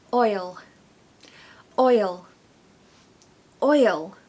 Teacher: this word needs a little why sound in the middle to help you say it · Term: magic why